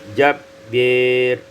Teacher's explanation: imalatu fathil ba wal alif, fatahkan diimalakan fathah ba dan alif menjadi jabbir.